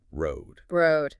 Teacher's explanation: Your tongue goes to the D position, but you don't really push the air out strongly. Just a soft stop.